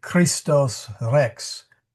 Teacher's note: Rs are rolled a bit similar to Spanish and French. · So if you say Christos Rex Christ the King, you want to roll that R to a little bit. Not too much, just a little.